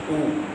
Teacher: جیسے ہمسہ صبر آ، منہ اور آواز کو کھول کر زبر پڑھیں گے اور آواز کو نیچے گراتے ہوئے زیر پڑھا جائے گا، اور پیش ادا کرتے ہوئے ہونٹ گول ہو جائیں گے، ہونٹوں کی گولائی سے پیش کو ادا کیا جائے گا